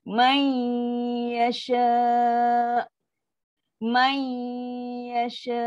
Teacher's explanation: Masuk 50% saja. 50% bunyi nun, yang kan ada dengung untuk nun, 50% lagi bunyi ya. Sebab tu bunyi dia may yasha. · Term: idgham naqis